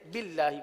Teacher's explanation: اللہ کے لام کو باریک اس لیے پڑھیں گے کہ اللہ کے لام سے پہلے زیر ہے، باللہ پڑھیں گے۔